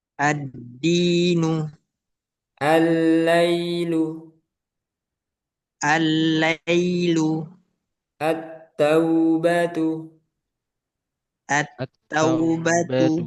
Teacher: Ini huruf-huruf asyamsiyah. Kalau al bertemu huruf-huruf ini, maka lamnya jangan dibaca atau harusnya dileburkan, harus dileburkan. Contohnya al bertemu dal, ad-dinu.